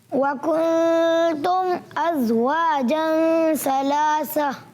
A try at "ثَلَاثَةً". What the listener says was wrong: اچھا ثلاثہ ہے ثلاثہ ہے. سا کی ادائیگی کے لیے رکھیں. ثلاثہ. یہ بعد والا سا آپ کا کلیئر تھا. دوسرا تھوڑا سا سیٹی والا بن رہا ہے سین بن رہا ہے.